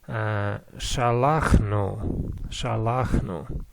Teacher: the first vowel is not reduced to sheva, and it is not kametz hatuv, it is just a full kametz